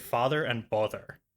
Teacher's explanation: So I clearly have the father bother merger.